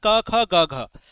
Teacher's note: तो जो क वर्ग है प्यारे बच्चों ये हम लोगों का निकलता है कंठ से।